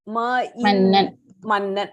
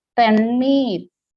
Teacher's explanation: when you say mannan, the tongue touches the front portion of your palate, the teeth. Mannan. When you say tannir, the tongue gets rolled.